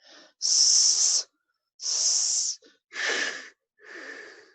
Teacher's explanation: 좁은 곳을 빠르게 공기가 통과하니까 마찰이 일어나요. 스, 스, 예, 마찰음이라고 할 수 있어요.